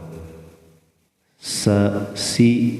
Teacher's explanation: sin ini adanya di ujung lidah ya, dengan ujung gigi seri bawah